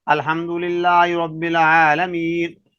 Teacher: الحمد للہ کی لام سے پہلے زبر آ رہی ہے لیکن لام پھر بھی موٹا نہیں ہو رہا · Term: باریک